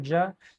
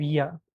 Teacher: In Andalusia they prefer more ja instead of ya.